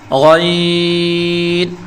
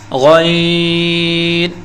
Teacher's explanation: یہ ایک موٹا یعنی پر پڑھا جانے والا حرف ہے جسے حلق کے اوپر والے حصے سے ادا کیا جاتا ہے، اور منہ بھر کر بولیں گے